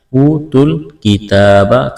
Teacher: کاف اور تا کو باریک کرنا ہے، ایک الف کے برابر کھینچنا ہے، کڑا زبر ہے